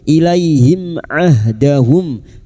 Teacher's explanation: Izhar syafawi. Mim sukun dibaca jelas tanpa mendengung.